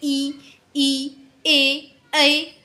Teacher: उच्चारण में जीव के अगले भाग का जब हम लोग यूज़ करते हैं तो उसको अग्र स्वर कहते हैं